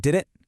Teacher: The T in didn't kind of gets dropped. And that final T in the word it becomes that glottle stop we just learned about.